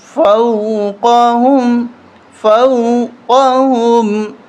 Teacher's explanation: واو ساکن سے پہلے اگر زبر ہو تو اس واو کو حروف لین کہتے ہیں، تو یہاں پر ہم زیادہ نہیں کھینچیں